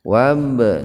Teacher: Wab qalqalah sugro. Ada ba sukun yang jatuh di tengah-tengah kata itu. Jadi ba-nya dipantulkan.